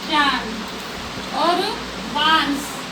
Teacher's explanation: बोलते वक्त नाक और मुंह दोनों से हवा निकलती है। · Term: चंद्र बिंदु